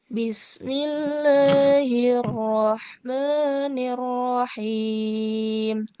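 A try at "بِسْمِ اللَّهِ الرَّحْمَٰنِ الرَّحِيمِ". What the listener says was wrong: R-nya jangan diseret, jangan nirroh, tapi langsung ke ro yang tebal. Bismillahirrahmanirrahim.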